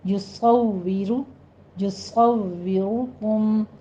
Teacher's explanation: یصورکم، یصورکم، صاد بھی پر ہے، را بھی پر ہے، آگے واو میں آپ نے فا کی ساؤنڈ نہیں لانی ہے، واو کے اوپر ہونٹوں کو گول کیجیے اور نیچے پست کر لینا ہے، کسرہ ہے۔